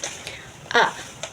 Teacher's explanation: humul alif lam qamariah fa itu adalah mad wajib muttasil dan faizun itu mad th'i untuk pembahasan makhrijul hurufnya pada surah at-Taubah ayat 20 ini ada beberapa huruf yang digunakan yaitu adalah A. A itu alif itu dikeluarkan dari rongga rongga mulut aljauf